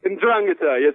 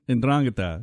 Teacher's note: So the stress is on the second syllable.